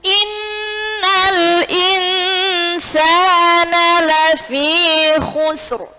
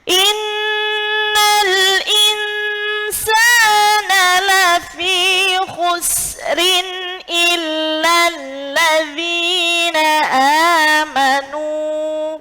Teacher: Nah, jadi khusrin ini ada dua cara baca. Kalau jenengan berhenti, ro-nya tebal. Kalau jenengan lanjut, maka ro-nya tipis.